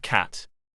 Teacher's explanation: K. Voiceless velar plosive cat.